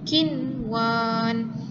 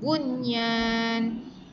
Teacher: Ianya dibaca dengan nun mati ataupun tanwin itu dibaca dengan jelas.